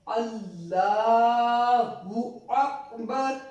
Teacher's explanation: we will pronounce the Lam of Allah thick